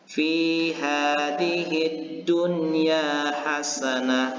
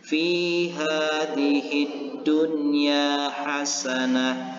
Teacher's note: nun mati ini ataupun yang berbaris sukun ini dengan jelas dan tidak berdengung atau dibaca izhar